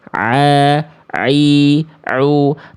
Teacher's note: Tempat keluar dari huruf ain itu dilafalkan dari tenggorokan bagian tengah.